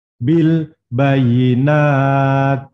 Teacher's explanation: Jadi mengucapkan ta itu nanti keluar nafasnya. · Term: huruf ta